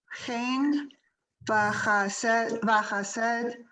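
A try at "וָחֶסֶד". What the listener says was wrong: Careful, check the vowel under the chet.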